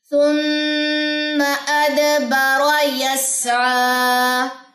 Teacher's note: میم مشدد کے غننے کے بعد آپ نے یہ جو زبر ہے اس کو لمبا نہیں کرنا · یہاں پہ را کی زبر کو لمبا نہیں کرنا، بارا نہیں پڑھنا · یس، سین میں سیٹی ہوتی ہے اور آپ نے سین کی جزم یہاں پہ دیکھی ہے تو یہاں پہ آپ سٹے کریں گے. یس یہ 2 سیکنڈ لمبا ہوگا کھڑا زبر